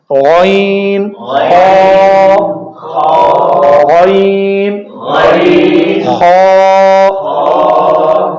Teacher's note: حلق کے سب سے اوپر والے حصے سے جو منہ کی طرف ہے، یہاں سے یہ 2 حروف ادا ہوتے ہیں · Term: حروف حلقی